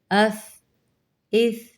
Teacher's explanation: سیٹی کی آواز نہ آئے یاد رکھیے گا